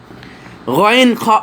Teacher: কণ্ঠলীর অগ্রভাগ হতে গাইন খ উচ্চারিত হয়